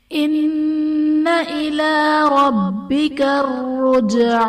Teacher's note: ان الى ربک الرجعى، ان میں نون مشدد ہے، غنہ کریں گے، اور ربک میں با حرف قلقلہ مشدد ہیں، یہاں پر قلقلہ خوب جماؤ کے ساتھ کریں گے۔ رجع میں جیم حرف قلقلہ ساکن ہے تو یہاں پر قلقلہ خوب ظاہر کریں گے